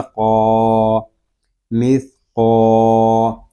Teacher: سا کو نرمی کے ساتھ پڑھیں گے، اس میں سیٹی کی آواز نہیں آنی چاہیے. آگے قاف حروف مستعلیہ میں سے ہے، اس کو پر یعنی موٹا پڑھیں گے. اور آگے الف مدہ بھی ہو رہا ہے، اس کو ہم ایک الف تک کھینچ کر بھی پڑھیں گے.